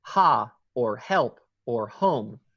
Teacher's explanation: tiny bit of constriction more constriction than breathing and it's voiceless